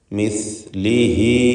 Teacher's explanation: ഹ ദമീറിന് മദ്ദുസ്സിലത്ത് സൂറ നൽകി 2 ഹറക്കത്തിൻ്റെ അളവിലുള്ള തബീഇയ ദീർഘമാണ് നൽകുക